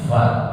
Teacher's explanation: Bibir bawah dengan gigi seri atas.